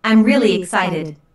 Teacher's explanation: notice the emphasis on really really is used to emphasize the adjective excited